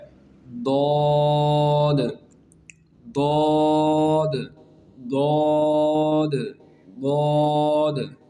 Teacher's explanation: زبان کی سائڈ۔ زبان کی سائڈ جو ہے وہ داڑوں کی جڑ سے جب لگتی ہے تو پھر یہ حرف ادا ہوتا ہے